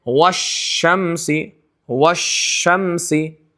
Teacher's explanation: شین کے ساتھ ادا ہونے والے حرف میں جیم بھی ہے، یا بھی ہے، لیکن کسی میں آواز پھیلتی نہیں ہے. شین میں آواز منہ کے اندر پورے پھیلتی ہے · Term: تفشی